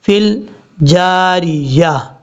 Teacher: فا کو لام سے ملاتے ہوئے بیچ میں یا اور حمزہ کو چھوڑ دیں گے